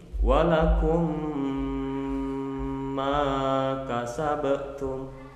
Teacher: Ulangi, walakum ma kasabatum. Nah, walakumnya ditahan karena di sana ada mim sukun bertemu mim, menimbulkan hukum bacaan idgham mislen.